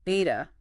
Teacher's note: What's that sound like? It's made with both lips getting close but not fully stopping the air. Kind of like a B without fully closing your lips, or a very soft, buzzy W, maybe?